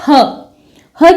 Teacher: टकराती है कंठ पर यानी कंठ को छूकर निकलती है इसलिए ह का उच्चारण स्थान कंठ है